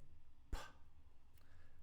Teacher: I have to release the sound. But at the beginning, I actually have to block the air from coming out of my mouth.